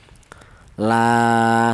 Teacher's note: dibaca panjang yaitu dua harakat ya la seperti itu.